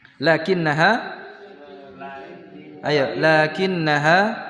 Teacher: membaca lakin itu panjang lanya walaupun tidak ada alifnya.